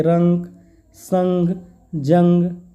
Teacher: इसकी ध्वनि केवल नाक से निकलते है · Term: अनुस्वार